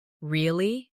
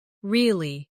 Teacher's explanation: Try this with me. Say, really? With a rising tone to show surprise. Now say, really? With a falling tone to show you don't believe someone. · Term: intonation